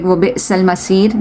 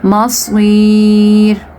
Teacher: you have to read this thicker, this is صاد. Masir.